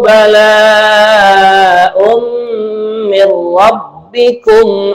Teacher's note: Kemudian kalimat bala, ini dibaca 4 harokat, namanya mad wajib muttasil. Kemudian tanwin bertemu dengan mim, namanya adalah idgham bigunnah, ada mendengungnya. Nah, kemudian mir rabbikum, ini idgham bila gunnah.